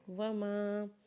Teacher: فانتہوا وقف ومانہاکم عنہ فانتہوا واو کے اوپر زبر پڑھیں گے میم کو الف کے ساتھ ملا کے پڑھیں گے جیسے میم الف زبر ما اور اسے ایک الف کے برابر کھینچیں گے